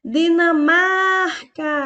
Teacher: a palavra Dinamarca é uma paroxítona, porque a sua penúltima sílaba, o mar, é a sílaba mais forte